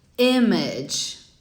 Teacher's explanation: Não é um I e não é um E. É uma coisa in between, né? Entre um e outro. Então não é image, nem image.